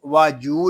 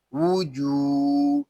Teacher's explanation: اس کو واجو نہیں پڑھیں گے، واو کے اوپر پیش ہے، اس کو ہم ہونٹوں کی گلائی سے ادا کریں گے